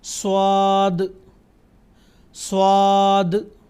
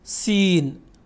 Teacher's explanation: आवाज पुर है यानी गोल आप स्क्रीन पर देख सकते हैं जब मैं स्वाद की आवाज निकालता हूं तो मेरे होट गोल होते हैं ताकि उसकी आवाज गोल हो जाए